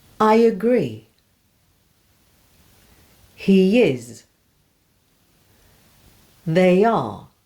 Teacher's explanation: Now for Y as a linking sound in connected speech. In connected speech, we often add Y between words when one word ends in a vowel and the next begins with a vowel.